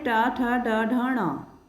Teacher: इनका उच्चारण स्थान मूर्धा होता है। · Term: ट वर्ग